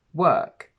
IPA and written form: wɜ:k (WORK)